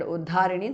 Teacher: Sakala uddharini, sakalodharini is a compound word. Uddharini, the second dha is mahapranaha.